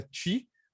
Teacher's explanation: E aí é uma coisa complicada, e pior ainda quando o T no final das palavras vem com E no final, e esse E no final vira I